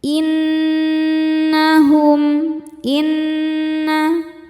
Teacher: nun bertasydid. Cara bacanya berdengung. Tahan dengungannya kurang lebih dua harakat. Innahum hum ada hukum izhar syafawi karena ada mim sukun yang menghadapi huruf selain mim dan ba. · Nun gunnahnya dihukumi gunnah musyaddadah karena nun bertasydid. Cara bacanya berdengung, tahan dengungannya kurang lebih 2 harokat. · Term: dhunah musyaddadah